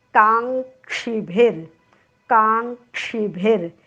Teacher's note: काच्या पुढे जो ङ दिसतोय तो कावरचा अनुस्वार आहे. क ख ग घ ङ मधला तो उच्चार आहे